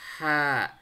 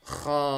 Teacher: beda dengan ha, lidahnya biasa istirahat. Ha. Kalau ini enggak, kita cekungkan lidahnya jadi kho. Terdengar suara tebal.